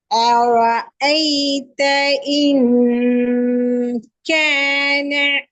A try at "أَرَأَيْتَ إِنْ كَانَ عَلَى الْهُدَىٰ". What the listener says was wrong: இன். எஸ் எஸ், அந்த இன் என்ற sound வரக்கூடாது. எனக்கு சவுண்ட் கேட்கிற மாதிரி விளங்குது இன்னங்கிறது.